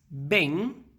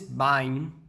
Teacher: em Portugal, a palavra bem rima com mãe, coisa que no Brasil é impossível. Bem, mãe. Mas, enfim, diferenças.